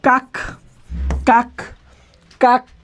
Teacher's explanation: যখন আমি কাক বলছি তখন কিন্তু আমার উচ্চারণ থেমে যাচ্ছে। যখন উচ্চারণ থেমে যায়, থেমে গেলে সেটাকে বলা হয় বদ্যাক্ষর বা ব্যঞ্জনাত্মক অক্ষর।